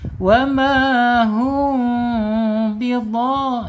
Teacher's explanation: Kemudian secara makhraj ya, mim ini ada di asyafatain, 2 bibir, kemudian ada di al-khaysum, rongga hidung. Rongga hidung ya, tidak boleh coba ditutup hidungnya, bisa dia masuknya ke rongga hidung mim itu. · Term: ikhfa syafawi